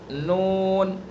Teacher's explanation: زبان کا کنارہ ایک ناب سے لے کر دوسرے ناب تک اوپر کے دانتوں کے مسوڑے